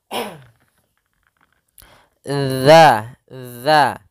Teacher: Hati-hati dalam pelafalan huruf zal, yang mana zal salah satu sifatnya yaitu sifat idlaq yang memang mudah dalam pelafalannya, yang mana makhrajnya, makhraj huruf zal yaitu ujung lidah menempel dengan gigi seri atas